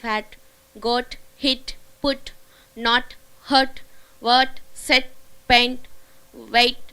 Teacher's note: T at the end of the word it is held it is not released